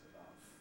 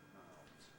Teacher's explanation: voiceless in the singular, but mouths voiced in the plural